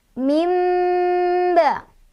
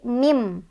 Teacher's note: Di sini ada hukum iqlab karena ada nun sukun bertemu dengan huruf ba. Jadi cara bacanya adalah nun sukunnya diganti menjadi bunyi mim.